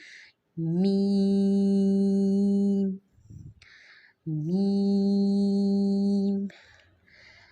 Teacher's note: میم کی ادائیگی جو ہے وہ دونوں ہونٹوں کے خشک حصے کو آپس میں ملانے سے میم کی ادائیگی ہوگی